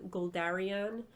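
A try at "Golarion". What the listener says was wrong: There's no D in Galarian. You said Goldarion.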